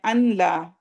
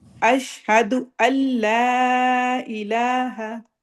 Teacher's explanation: اشہد اب یہ بھی ایک اکثر کامن غلطی ہے کہ ہم ان کہتے ہیں، ان لا، جب بھی نون کے بعد اب یہ لام آئے گا تو اس کو ہم نے مرج کرنا ہے، ادغام کرنا ہے، لیکن وداؤٹ غنہ، غنہ نون کی آواز نہ آئے۔